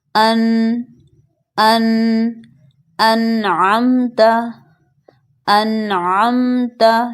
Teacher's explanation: یعنی میں نے صرف نون کو ظاہر کر کے پڑھا ہے، کھینچا نہیں ہے اس کو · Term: اظہار